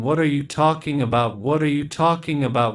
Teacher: we stress talking because that's the key word but all of the other words are spoken very quickly let's prolong the ah the vowel sound in talking what are · 5 words, but when we say the sentence it sounds like one word. All the words are connected. There is no break between them. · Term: thought groups